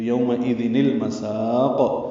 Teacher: سین کو لمبا کریں گے اور قاف پہ قلقلہ کریں گے وقفاً، یہ مد عارض للسکون بنا کے.